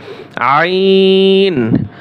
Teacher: গলার ভিতরে চাপিয়ে বলতে হবে।